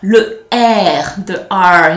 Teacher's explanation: it's like gargling. You're doing gargles from your throat. It comes from your throat